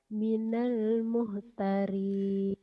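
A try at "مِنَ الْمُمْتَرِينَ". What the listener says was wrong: Minal mumtarin. Muhtari ini kan mim. Minal mumtarin. Ini mim itu kan gini tulisannya ini tuh ya. Ini kan mim tuh. Ini kesini mim tuh mim. Gini-gini mim. Cuman gini nih kadang-kadang ini kan harusnya ada bolongnya. Ini nggak ada bolongnya ya. Salah sebetulnya. Tapi orang udah umum. Walaupun ini salah, ini mim. Harusnya kan ada bolongannya gitu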